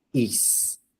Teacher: Veja que o A se separou do I. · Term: hiato